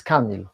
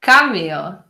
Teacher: Stress on the first syllable, like most English names and words.